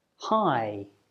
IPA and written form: haɪ (high)